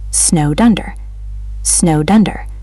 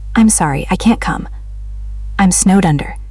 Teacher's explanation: The D in snowed links to under.